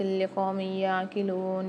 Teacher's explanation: 2 زیر کی تنوین کے بعد یا مشدد آ رہی ہے، یہاں پر غنہ کر کے پڑھیں گے ادغام کے ساتھ، کیونکہ ادغام مال غنہ والا قاعدہ ہو رہا ہے یہاں پر۔